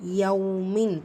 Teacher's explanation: இஹ்ஃபா தன்வீனுக்கு நூனை பாதியாக மறைச்சி குன்னா செஞ்சு ஓதணும்